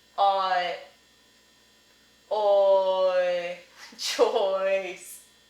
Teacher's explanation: and then you have choice, oi, as in choice, and that is the aw, as in thought, and then the I, as in kit.